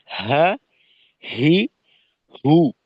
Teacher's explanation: হাটা হবে হলকের শুরুর উপরের অংশ থেকে।